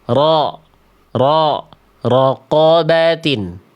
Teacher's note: Qof itu tebal sama kayak huruf ro ketika fathah. Maka angkat pangkal lidah bukan monyongin mulut. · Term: huruf qof